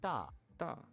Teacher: it sounds like an unaspirated T